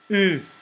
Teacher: U is pronounced as e with lips rounded as if trying to pronounce O